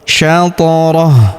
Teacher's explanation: Huruf th kita pantulkan atau kita qalqalahkan karena berharakat sukun. Syatah. Kemudian di sini huruf hu kita sukunkan ya karena di sini terdapat tanda berhenti atau tanda wakaf. · Huruf ta kita pantulkan atau kita qalqalahkan karena berharokat sukun.